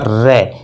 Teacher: प्रकंपित या कंपनजात से तात्पर्य होता है जब इसको बोला जाता है तो जीभ का जो अग्रभाग होता है, जीभ का जो अगला भाग होता है उसमें क्या होता है, रे, कंपन पैदा होता है, इसलिए इन्हें जो है प्रकंपित या कंपनजात या लुंठित व्यंजन कहा जाता है, रे को।